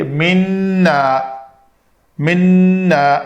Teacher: منا نون کا غنہ کرنے کے بعد دو حرکت کی لمبائی کریں گے